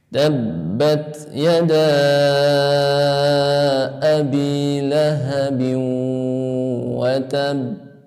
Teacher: watab ada qalqalah yang memakai syiddah, maka perlu ditekan sedikit.